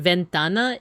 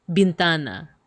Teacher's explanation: In a lot of Spanish loanwords in the Philippines, they become B's. Like instead of ventana, it's bintana.